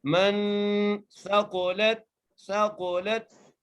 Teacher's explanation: سا کو بغیر کھینچے، قاف کو موٹا کر کے لام کو تا سے ملانا ہے